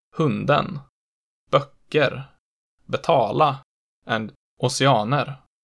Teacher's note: They kept accent 1 in monosyllabic words, and then generalize accent 2 onto everything else